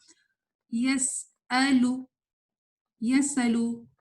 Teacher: تو جب آپ نے زبر پڑھنا ہے نا اس کے ساتھ, تو پھر تھوڑی سی ووکل کارڈ کھلے گی, تھوڑی سی آواز پھر آئے گی, لیکن اس میں ہوا نہیں ہوگی